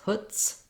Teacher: So back to chutzpah, we have the letters TZ say voiceless t and s. So there's no z sound